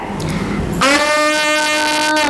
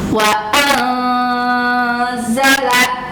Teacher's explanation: Jadi bunyi nun mati atau tanwinnya disamarkan, tidak jelas ke nunnya ya, disamarkan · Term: ikhfa